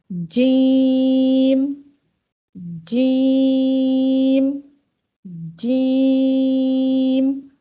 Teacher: अदा करते हुए आप ये फील कर रहे होंगे कि ज़बान के दरमियानी हिस्से में, ज़बान का जो बीच वाला हिस्सा है और ऊपर के तालु के दरमियान कोई भी गैप नहीं है। · जीम को अदा करते वक्त आवाज़ में कुव्वत और बुलंदी पैदा होती है और सांस का जो जारी रहना है वो बंद हो जाता है। जीम को अदा करते वक्त ज़बान का जो अक्सर व बेशतर हिस्सा है तालु की तरफ नहीं उठता बल्कि नीचे रहता है।